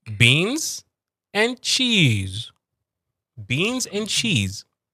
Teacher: So cheese is going downwards. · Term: intonation